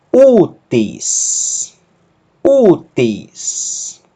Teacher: Ômicron Y pronuncia-se U e a aspiração branda não altera a pronúncia do ditongo. O acento agudo indica que o ditongo U é justamente a sílaba forte da palavra.